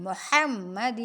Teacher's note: حا کو وسط حلق سے پڑھیں گے اور باریک پڑھیں گے